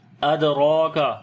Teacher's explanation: دال کے اوپر قلقلہ کریں گے، کمزور قلقلہ ہوگا، را کو موٹا پڑھیں گے ، کھڑی زبر ہے اس کے اوپر، کاف یہاں پر باریک